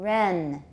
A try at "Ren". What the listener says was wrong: That is short, but don't make it too short.